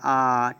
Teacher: उच्चारण में मुख द्वार पूरा खुलता है जैसे बड़ा आ बड़ा आप कहेंगे तो आपका मुंह पूरा खुल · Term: विवृत